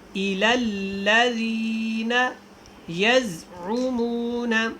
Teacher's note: یہاں پہ حرکت کو نہیں آنے دینا، یز سختی کے ساتھ پڑھیں